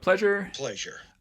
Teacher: we've got a two-syllable word it's transcribed with stress on the first syllable